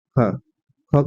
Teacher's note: क्या है यह अघोष ये भी है लेकिन यह है महाप्राण तो ख जो है अघोष और महाप्राण अघोष और महाप्राण